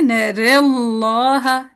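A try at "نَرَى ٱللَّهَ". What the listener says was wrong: नहीं, अगर ज्यादा झुका देंगे ना तो वो कसरा बन जाएगी, नरेल्ला बन जाएगा,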